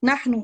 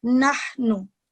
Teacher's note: ऊपर सिर्फ दम्मा है इसलिए आप इसकी आवाज को लंबा नहीं करेंगे, सिर्फ 1 सेकंड के लिए